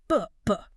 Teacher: The throat is totally jumping. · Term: hard b sound